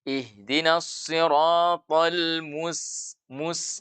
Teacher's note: kalau kita tarik bibir kita setelah monyong melafalkan huruf mim yang berharakat dhammah, mus, maka terasa tipisnya huruf sin yang kita baca